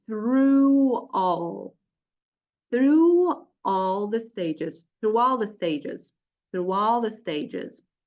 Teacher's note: in this case you link the vowel to the following um you link this vowel to the following vowel using W consonant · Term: vowel to vowel linking